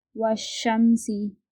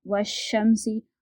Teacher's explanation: الف اور لام ہم نہیں پڑھیں گے، بلکہ بعد والے حرف سے ملا کر پڑھیں گے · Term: حرف شمسی